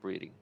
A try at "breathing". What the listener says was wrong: to enunciate the TH in that breathing.